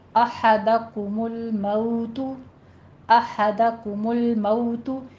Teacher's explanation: احدہ کمل کاف کے پر ضمہ ہے، ہونٹوں کو گول کیجیے، آگے لام کے پر جھٹکا نہیں دینا. مئو میں واؤلین ہے ہمارے پاس، نرمی سے دونوں ہونٹوں کو ناتمام گول کرتے ہوئے